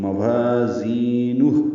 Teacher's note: وا الف مد زی آئے مد ہو الٹا پیش مد صلہ یعنی واو مد، تو وا زی اور ہو تینوں مد اصلی ہیں. وا اور زی دونوں کو دو دو حرکات لمبا کرنا اور ہا ساکن ہو جائے گا، اس پہ ہم سکون.